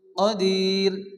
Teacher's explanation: র বারিক হওয়ার তিনটি কায়দা প্রথমত র এর নিচে জের হলে র বারিক হয় অর্থাৎ মুখ গোল না করে সাধারণ অবস্থায় পড়তে হয়